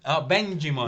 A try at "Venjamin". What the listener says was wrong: No, Venjamin. As in venge.